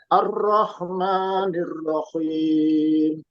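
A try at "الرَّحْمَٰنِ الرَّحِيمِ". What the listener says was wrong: Ro. Angkat sedikit pangkalnya. Ar-ro.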